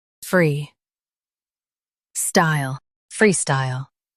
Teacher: Emphasize free and glide into style.